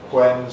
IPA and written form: hwen (when)